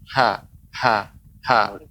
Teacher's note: makhraj H itu bukan dada. Maka kita sampaikan makhraj H adalah tenggorokan. Ya, tenggorokan itu ada yang paling atas, itu ada huruf Q dan huruf Kh, kemudian paling tengah itu huruf Ain dan huruf H paling bawah, tapi masih tenggorokan, ya.